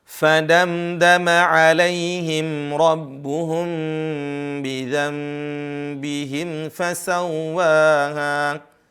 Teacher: Fadamdama 'alaihim rabbuhum, ya. Kemudian ada mim bertemu dengan ba, ya. Ini ditahan, para ulama tajwid menyebutnya dengan ikhfa syafawi